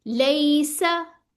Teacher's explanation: लैसा, इसको लंबा नहीं करना अब आपने। लैसा, सीन की सफीर होनी जरूरी है। ठीक है, सफीर यानी ठीक सीटी।